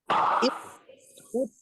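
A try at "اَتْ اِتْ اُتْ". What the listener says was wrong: udaranya belum. At, it, ya. At, it, ut sedikit.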